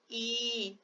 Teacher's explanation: ई ये थोड़ा खींचा हुआ है, तो 2 गुना समय लेता है। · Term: दीर्घ स्वर